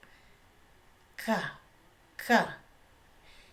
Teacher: Entonces el sonido se va a realizar en la velar. La lengua se va a acercar al velo.